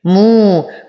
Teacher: واو ساكنة ما قبلها مضموم فهو من الطبيعي حركتين